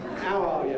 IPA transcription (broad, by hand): æʊ ˈɑː jə